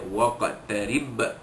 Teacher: Ada satu lagi qalqalah kubra, kerana ba mati itu berada di hujung kalimah